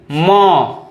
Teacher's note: म आपके नाक से भी जो है निकला है आवाज और मुंह से भी निकला है · जिनका उच्चारण नाक और मुंह दोनों से होता है उसे अनुनासिक वर्ण कहते हैं